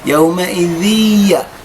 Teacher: تدعم النون الساكنه في الياء فتصبح يومئذ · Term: ادغام